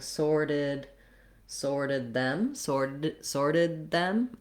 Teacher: I'm going to end up with a stopped D.